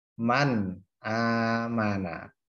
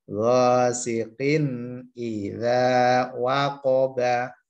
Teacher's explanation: Kapan ada nun sukun atau tanwin bertemu dengan hamzah, ha, kho, ain, goin, ha, namanya bacaan idhar halki. Cara membacanya jelas. Jelas tuh tidak ada dengungnya.